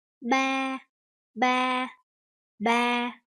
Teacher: the flat tone. So try to make your voice consistent, like from the beginning to the end.